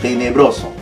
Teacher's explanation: La palabra tenebroso no se tilda. La fuerza, la voy a señalar aquí, está en bro.